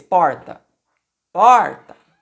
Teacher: a sílaba tônica é o por, é a penúltima sílaba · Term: paroxítona